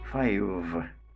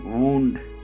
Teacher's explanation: v is labiodental voiced fricative sound, while w is bilabial velar voiced approximant.